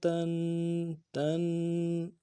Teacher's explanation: تا دو زبر تن. تنوین ہے، غنہ کریں گے، ایک الف دال میں غنہ کو کھینچیں گے.